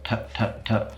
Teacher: there's a specific part of your mouth a passive articulator that your tongue tip comes to touch that's your alveolar Ridge go tap tap tap and you'll be able to feel it